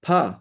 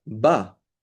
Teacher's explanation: there's a P which is unvoiced and a B which is voiced